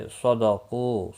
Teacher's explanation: सदक़ू स्वाद मुस्तालिया है, पुर पढ़ा जाएगा। क़ू वाव मद्दा है, 1 अलिफ के बराबर खींच कर पढ़ेंगे वक़फ़ की सूरत में भी।